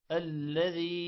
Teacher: الذي یا پر مد ہے، لمبا کریں گے